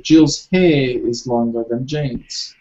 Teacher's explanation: Maybe some British might not necessarily pronounce the R because they might just say Jill's hair is longer than Jane's.